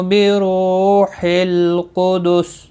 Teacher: واو مدہ ہے اور را پیش کی وجہ سے پر بھی پڑا جائے گا، واو مدہ ایک الف کی مقدار کے برابر کھینچ کر پڑھیں گے، لام ساکن کو ہلانا نہیں، قدس سین ساکن ہوگا وقف کی صورت میں، وقبل سین ساکن پڑا جائے گا، اور یہاں پر ملانے کی صورت میں سین اپنی حرکت کے ساتھ پڑا جائے گا۔